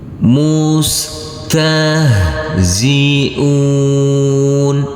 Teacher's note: huruf ha yang bersukun ini maka tidak boleh dipantulkan